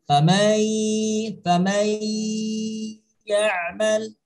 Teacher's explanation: Idgham itu artinya memasukkan, bukan hanya memasukkan, tapi setelah kita masukkan huruf nun mati ke dalam huruf ya, harus disertai dengan penegasan membacanya dan secara dengung. Famai ya'mal, jadi nun matinya tidak secara jelas karena sudah sudah menyatu dengan huruf ya.